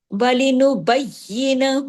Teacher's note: وَلِنُبَيِّنَهُ، نُبَيِّ سختی سے یا کو جوڑیے، ڈبل پڑھیے، یا پہ تشدید ہے اور تمام باریک حروف ہیں. آخر میں ہا الٹا پیش ہو جو ہے 2 حرکات کھینچے گا. وَلِنُبَيِّنَهُ، اگر آپ اس کو ڈھیلا ڈھالا پڑھ دیں گے نُبَيِّنَهُ ایک یا پڑھنے میں آئے گا، ایک یا نہیں آئے گا، نقصان حرف ہوگا، لہنے جلی ہوگا.